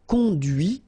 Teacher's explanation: final T is not pronounced